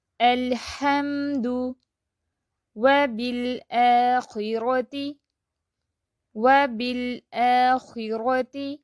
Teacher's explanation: نہ جاری نہ بند، بلکہ درمیانی کیفیت میں اس کو پڑھیں گے لام ساکن کو